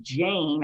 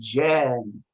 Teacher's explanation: Instead of Jane, I'd say Jen. Yeah, you drop the vowel a little bit.